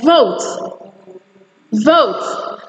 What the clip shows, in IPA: vəut